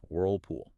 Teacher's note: Both the Ellen whirl and the Ellen pool are typically dark L's in SAA. Remember the dark L requires the back of the tongue to raise up towards the soft pallet giving the sound a resonant heavier almost olive quality.